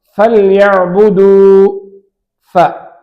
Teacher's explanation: மேல் பற்கள் கீழ் உதட்டின் நடுப்பகுதியிலே உட்பகுதியிலே இணையும் பொழுது ஃப உண்டாகும். உதாரணம் ஃபல்யஅபுது, ஃப.